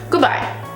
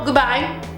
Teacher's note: É o gu e o bye. O D desapareceu, porque eu não tenho tempo pra falar duas consoantes, o D e o B. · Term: dropped sounds